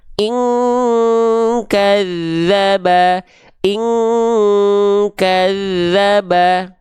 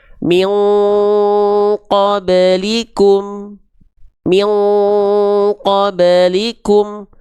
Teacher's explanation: Dengungannya yang menyerupai ke bunyi eng.